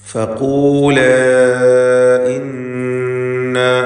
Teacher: നൂൻ മുശദ്ദദ മണിച്ചുകൊണ്ട് ഉച്ചരിക്കുക.